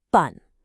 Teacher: That's a fourth tone. It needs to be sharp, decisive. Think of it like a quick downward chop with your hand.